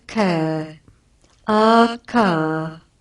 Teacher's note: It's being obstructed by the back of the tongue and the back of the velum, and that's why it's called a velar stop.